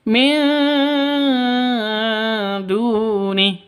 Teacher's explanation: Nun mati bertemu dengan dal. Samar didengungkan, siap-siap ke huruf dalnya karena ikhfa hakiki.